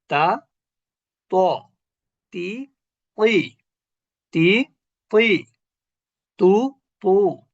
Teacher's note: তা যেখানে ত সেখানে, অর্থাৎ জিহ্বার আগা উপরের দাঁতের গোড়া